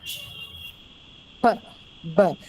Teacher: you hold that air in your mouth and it's released all on a sudden, almost like an explosion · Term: plosives